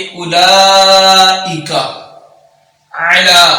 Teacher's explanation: تو جب بھی کھڑا زبر کے بعد حمزہ آئے گا تو کھڑا زبر پر مد پیدا کی جائے گی، یعنی کہ اس کھڑا زبر والے حرف کو تھوڑا لمبا کر کے پڑھا جائے گا۔